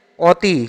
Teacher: অ উচ্চারণ হবে না। এখানে হবে ও উচ্চারণ হবে।